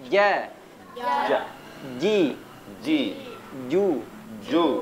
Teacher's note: Menempel ya, tengah lidah bertemu dengan langit-langit. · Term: huruf Jim, huruf jim